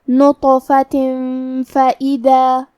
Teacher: فا حروف الاخفاء میں سے ہے تو ہم تنوین کو چھپاتے ہوئے اور غنہ کے ساتھ یہ حکم کو ادا کریں گے